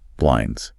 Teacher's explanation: And often that D in blinds is pretty silent.